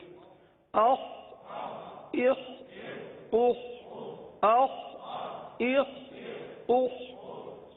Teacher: اب یہ بھی حلق سے ادا ہونے والا حرف ہے, اور حلق کے اوپر والے حصے سے ادا ہوتا ہے, لہذا خا کو حلق سے ادا کریں گے, اور یہ حرف پر ادا ہوتا ہے, لہذا پر ادا کریں گے.